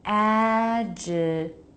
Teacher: We have two T's between vowels. The first is a true T and the second is a flap. Why? Because the first one begins a stressed syllable.